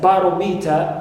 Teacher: So, ta, not stressed, me, not stressed, and ro is stressed. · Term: anti-penultimate